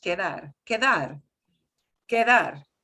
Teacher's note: That little D is going to sound more like a TH